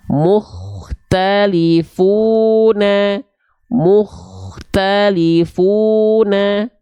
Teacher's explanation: muktalifuna mukhtalifuna [Musik] perhati [Musik] Yaa jangan sampai dibaca mtalun ya dibaca tebal pangkal lidahnya diangkat